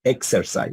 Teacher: Hay un cierre como de una K y luego viene un sonido de una S.